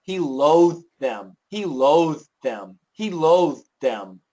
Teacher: the loathe TH is going to be really clear, but the them TH is going to be much shorter. It's there, but it's going to be shorter because of the D.